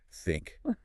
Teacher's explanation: Unvoiced, just blow air through your teeth. Think, no vibration. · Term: theta